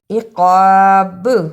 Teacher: رکنے کی صورت میں با پر بھی قلقلہ کرنا ہے